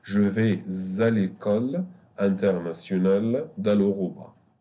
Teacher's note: The S will be pronounced Z because of the vowel.